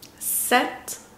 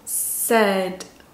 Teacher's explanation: 똑같이 모음 소리가 유지가 되면서 하나는 짧고 길고